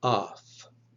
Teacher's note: if it comes before a voiceless consonant it will be pronounced like off like in the word pilaf